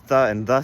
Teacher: those tha and tha sounds are actually interdental which means they're in between your teeth. Which are which is very rare in the world languages. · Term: interdental consonants